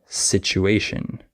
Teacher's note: the TU can be pronounced CH sometimes like situation